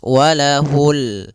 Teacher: Di sini ada bacaan alif lam pada lafal ini adalah lafal bacaan alif lam qamariah. Yaitu alif lam yang ditulis dan dibaca yaitu suara lamnya terbaca dengan jelas · alif lam qamariyah, yaitu alif lam yang ditulis dan dibaca, yaitu suara lamnya terbaca dengan jelas, walahul. Kemudian pada lafal jawari ada mad tabi'i, fathah bertemu alif, panjangnya 2 harakat.